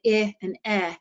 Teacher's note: When you say I and eh, your mouth is only open just a little more for the eh sound. Both of them are what we call front short vowels.